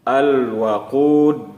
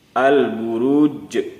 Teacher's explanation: Ketika membaca dal dimatikan, ada sedikit bunyi yang memantul. Al-waqud. Begitu juga dengan jim.